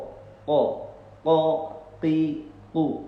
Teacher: ketika kita mengucapkan huruf qaf, maka keluarnya itu dari pangkal lidah bagian atas